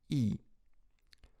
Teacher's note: губы не вытягиваются вперед, а могут даже растягиваться в улыбку. Так получается неогубленные гласные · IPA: [i]